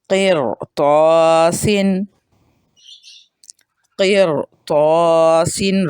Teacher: را ساکن کے بعد موٹے حروف میں سے کوئی حرف آ جائے تو را کو پر کر کے پڑھیں گے، چاہے وہ را باریک پڑھنے والی ہی کیوں نہ ہو۔